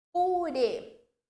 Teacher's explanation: O re indica a minha sílaba tônica e tá com acento circunflexo, então eu tenho um timbre fechado.